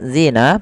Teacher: Kemudian pada lafal alladzina zina di sini ada bacaan mad thabi'i yaitu pada lafal zina panjangnya kita panjangkan dua harakat karena dia ada huruf ya sukun yang dialung dengan huruf kasrah.